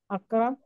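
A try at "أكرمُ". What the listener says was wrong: അക്രമു. അക്രമു എല്ലാം പറയും, അവസാനത്തെ അടയാളം കൃത്യമായിട്ട് പറയും. പോകുമ്പോഴും ഓരോ വാക്കിന്റെയും അവസാനത്തെ അക്രമേ അല്ല, അക്രമു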